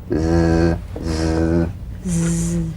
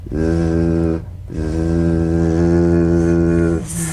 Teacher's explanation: The Z vibrates in that very small open space between the tongue and the upper teeth. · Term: voiced S sound fricative